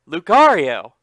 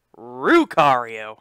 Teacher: you know how they pronounce l in japanese with an r sound